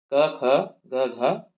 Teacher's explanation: ये क वर्ग के जितने भी व्यंजन हैं वो कंठीय होते हैं। ठीक है, कंठीय वर्ण होते हैं और इनका उच्चारण जो है कंठ से होता है। · इनका उच्चारण कंठ से होता है।